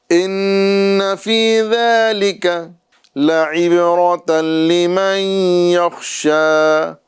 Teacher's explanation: لعب یہاں پہ با میں قلقلہ کرنا ہے،